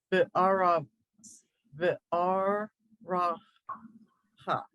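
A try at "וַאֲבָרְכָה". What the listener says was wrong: So you're moving this resh over here, and it doesn't want to do that. The avar ha.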